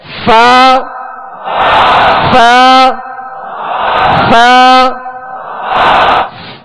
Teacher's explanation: اوپر کے سامنے والے دو دانتوں کے کنارے اور نچلے ہونٹ کا تر حصہ. فا فا فا آپ پہلے رکھیں مخرج پر, یعنی اوپر کے جو دو دانت ہیں اس کے کنارے آپ ہونٹ کے تر حصے پر آپ پہلے رکھیں.